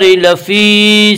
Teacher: یا مدہ کو ایک الف کے برابر کھینچ کر پڑھیں گے